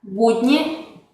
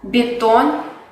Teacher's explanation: En la palabra budni, ba, es un sonido duro, mientras que en la palabra betón, el sonido b es palatalizado, porque viene antes de la vocal ye.